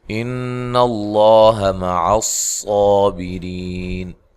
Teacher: ان اللہ مع الصابرین، نون مشدد پہ غنہ ضروری ہے، اور لفظ اللہ کو موٹا ادا کرنا ہے، اس سے پہلے حرف پر زبر ہے۔ مع صاد کو موٹا ادا کریں موٹی سیٹی کے ساتھ۔ بیری، ری یا مدہ ہے، وقف کی صورت میں مد کر سکتے ہیں۔